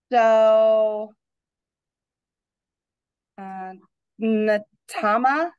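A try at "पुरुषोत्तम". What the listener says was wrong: Okay, it's not Natama. That's actually 2 T's, but I get what you say. Puru show. Puru show. Purushottama. Purushottama.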